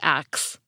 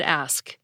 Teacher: speaker started moving from the KS sound back to the SK sound